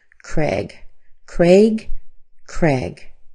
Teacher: you'll also hear a lot of people say Craig just with an e sound